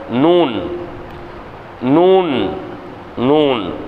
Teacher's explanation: நாவின் நுனி மேன்முரசில் நுனியின் படுமாறு உச்சரித்தல்.